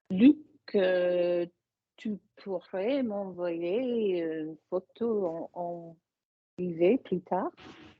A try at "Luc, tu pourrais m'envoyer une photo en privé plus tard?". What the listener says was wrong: You have gone up a shitload, madam. Really, you have. Credit where credit's due. Keep going. Close your mouth more, like you're doing. Slide through it.